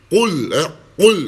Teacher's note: Qul a'udhu birabbil falaq. Qul, qaf, mesti kita kena keras tinggikan. Qul, itu dipanggil huruf isti'la.